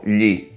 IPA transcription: ʎi